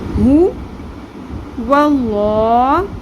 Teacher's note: دونوں ہا کی ادائیگی آپ نے اقصی حلق یعنی کہ حلق کے سب سے نیچے سینے کی جانب والے حصے سے گہرائی سے ہا کی ساؤنڈ آپ نے نکالنی ہے۔ سانس کی آواز نہیں آنی چاہیے، اس میں ہا کی آواز نہ آئے، ٹھیک ہے؟